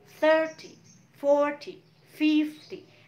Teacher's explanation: Nah, tapi ketika puluhan, yang ditekan adalah the first syllable, suku kata yang pertama.